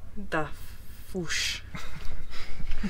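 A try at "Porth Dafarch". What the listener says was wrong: Porth Duff... You weren't saying foosh earlier.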